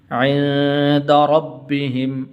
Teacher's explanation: را کے اوپر زبر ہے تو اس لیے اس کو پر کر کے پڑھیں گے۔